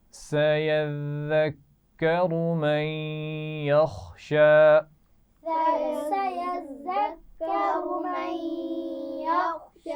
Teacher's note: سیز نہیں پڑھیں گے، ذال ہے یہ. ٹھیک ہے، اس میں سیٹی نہیں ہونی چاہیے